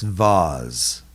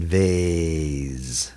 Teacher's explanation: some people in canada will pronounce this vaz using the short sound of the a ah rather than vase using the long sound